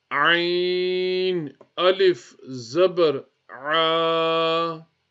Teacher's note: Next is the ayn from the middle of the throat.